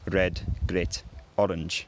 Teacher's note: traditionally that r sound is an alveolar tap or very occasionally i think a trill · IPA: /r/